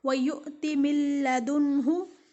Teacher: نون ساکن ہے اور نون کے بعد لام ہے جس کے اوپر تشدید ہے اور یہاں ہم غنہ ادا نہیں کر رہے ہیں، ادغام کر رہے ہیں لیکن ادغام غنہ کے بغیر کر رہے ہیں